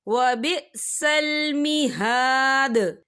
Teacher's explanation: یہاں پہ آیت ختم ہو رہی ہے تو دال ساکن ہو رہا ہے، تو دال پر کلکلہ ہوگا